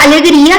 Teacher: es una palabra grave porque se acentúa en la penúltima sílaba